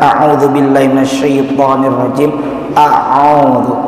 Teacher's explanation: Qul a'u, a hamzah, a, kemudian a'u huruf yang keluar dari tenggorokan